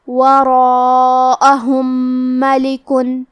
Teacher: آخری میں میم ساکن ہے، پھر حرف المیم ہے کلمت ملک، یہاں حکم ہے ادغام متماثلین صغیر، ہم پہلے میم کو دوسرے میم میں ملا کے ایک ہی میم اور غنہ اور تشدید کے ساتھ یہ حکم کو ادا کریں گے